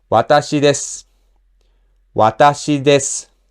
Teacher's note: when nothing is attached to desu like a particle, then people generally omit the accent on this and read it like a flat word.